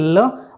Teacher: ल बोलते हैं तो जीभ तो ऊपर हो जाएगी ल, और जो ध्वनि निकलेगी वो आसपास से निकलेगी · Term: पार्श्विक व्यंजन